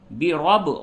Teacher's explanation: را کو پر کیجئے اور با میں قلقلہ کیجئے